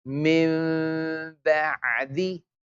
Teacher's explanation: You can completely close the lips also, mim, or you can keep a very thin opening that if someone tried to slide a piece of paper through the lips, it can go through. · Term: meme with ghunna